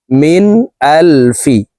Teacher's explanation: কদ জবর খর মিম দুই পেশরম বাগুনা মিম নুন জের মিন নুন সাকিনের পরে ইজহারের হরফ হামজা আসছে কারণে এই নন সাকিনকে গুন্না ছাড়া স্পষ্ট করিয়া পড়ব